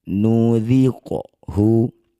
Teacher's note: Qaf sukun di tengah bacaan disebut qalqalah sugro. Pantulkan bunyi qaf, pantulannya jangan berlebihan, kecil saja.